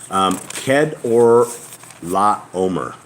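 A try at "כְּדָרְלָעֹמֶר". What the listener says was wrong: The D is it's like a TH.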